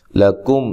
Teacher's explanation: لام کو باریک پڑھنا ہے، لمبا نہیں کرنا، کم کاف باریک ہے، میم ساکن کا اظہار ہے۔